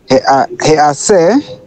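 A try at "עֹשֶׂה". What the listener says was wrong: So is that a hey or a tav?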